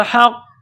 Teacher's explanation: ساتھ پلس کرنا ہے، ہا کو قاف کے ساتھ ملانا ہے، قاف کے اوپر تشدید ہے، قاف کو موٹا کرنا ہے